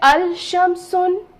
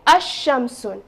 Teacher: So I will say ash-shamsun. Now you notice that lam here, lam remains silent. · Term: silent letter